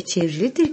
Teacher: çevirmekten çevrilidir olmuştur i sesi düşmüştür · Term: ünlü düşmesi